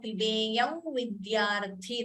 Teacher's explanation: the anuswara followed by v you could optionally chant it as with the nasal tone